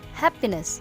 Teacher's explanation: In the word happiness, the most stressed syllable is ha, and the least stressed syllable is p.